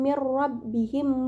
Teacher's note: Pada kalimat mir rabbihim terdapat hukum bacaan idgham bila gunnah karena terdapat nun sukun bertemu dengan huruf ra, dibaca masuk dengan tidak mendengung